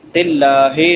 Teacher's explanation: لفظ اللہ سے پہلے زیر ہے تو لفظ اللہ باریک ہوگا